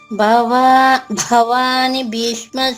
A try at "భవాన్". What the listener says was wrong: నీ పలకూడదు, నీ అందుకే మళ్ళీ చెప్తున్నా మీకు. భవాన్ అంతే, నా పుల్లుగా చెప్పాలి.